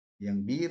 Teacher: Yang bir ini roknya tipis, caranya disenyumkan ya. Lidahnya jangan tegang, dibikin rileks.